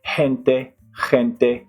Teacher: So you hear I do it a little bit heavier, a little bit raspier